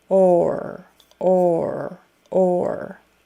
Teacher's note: round your lips a little bit for that o or so you round your lips and then your tongue goes back for the r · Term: vocalic sound or